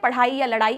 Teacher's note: ये ड और ढ दो उत्क्षिप्त व्यंजन कहलाते हैं